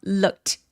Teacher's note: 얘는 트로 발음을 합니다. 똑같이 무성음으로요.